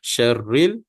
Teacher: ra sini kita sebut secara nipis